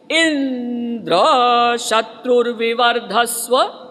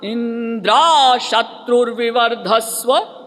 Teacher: जो ई पर जोर डालना था वो प्रेशर कर दिया द्र पर। जैसे मान लीजिए इंद्र शत्रुर्विवर्धस्व, तो उन्होंने कर दिया इंद्रा शत्रुर्विवर्धस्व, तो उसका अर्थ ही हो गया उल्टा।